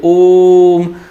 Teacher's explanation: जैसे आप लंबा बोलिए ओम, तो जो ये लंबा खींच रहे हैं उस वर्ण को, तो वो प्लुत स्वर का उदाहरण होता है